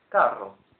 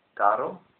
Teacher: the double R is rolled much more than the single R